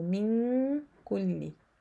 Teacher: من كل أمر, so we have a rule of nun sakin here followed by kaf. It is ikhfa letter, and it is light because kaf is not heavy, it is light ikhfa.